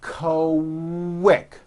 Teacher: the word quick is pronounced with a K and a strong W sound